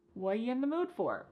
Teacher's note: The word are is gone. And the word you has been reduced to y. So when we link together what and you, it's super fast.